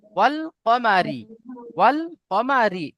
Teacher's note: র কে বারিক করে বারিক পড়তে হবে, করে। অর্থাৎ র কে পাতলা আওয়াজে পড়বে।